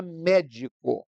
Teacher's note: proparoxítonas como é o caso da palavra médico em que aí a sílaba forte não é a última nem a penúltima é a antepenúltima